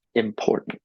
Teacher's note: Some of the syllables come with lower force, other syllables come with higher force. So in the word important, you say im and nt at the end with low force, no stress. Pour is high stress. The moment you add pour, it begins to sound like English.